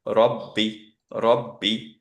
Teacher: যদিও কলকলা লেটার সাদ্দা থাকার জন্য অবভিয়াসলি কলকলা হচ্ছে না